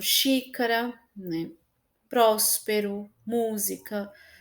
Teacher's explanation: independente da acentuação gráfica, o acento mais forte, tonicamente falando, é a antepenúltima sílaba. E a gente sempre conta de trás para frente.